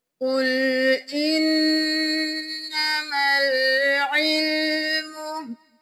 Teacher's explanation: قاف موٹا نون پہ تشدید ہے، غنہ کریں